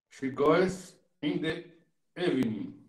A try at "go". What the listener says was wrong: Cuidado só com a pronúncia aí do go, para não dar aquela forçada no E, né? Então a gente não fala esse E antes do S. Go, e aí com S, goes. Para não ficar tipo goes, né?